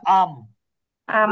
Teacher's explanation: একটা তো পরিবর্তন হবেই, নুনটা মিম হয়ে যাবে, পাশাপাশি এটাকে গুণনা করে পড়তে হবে। এই জন্য এটাকে কিন্তু অস্পষ্ট, যদিও এখানে শাব্দিক অর্থে অস্পষ্ট স্পষ্টর বিষয় নাই, কিন্তু গুণনা হলে আসলে অস্পষ্টতা একটা বিষয় চলে আসে।